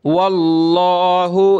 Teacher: लफ्ज़ अल्लाह से पहले वाव पे ज़बर है तो मोटा करेंगे लफ्ज़ अल्लाह को